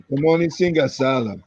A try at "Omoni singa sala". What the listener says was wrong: There's no long vowel there, we just Sala.